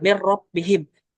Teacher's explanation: Kalau idgham kamil, itu secara sempurna nun ini hilang. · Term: idgham al-kamil